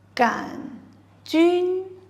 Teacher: 杆 does not have a u sound and is pronounced with the third tone, which is a falling rising tone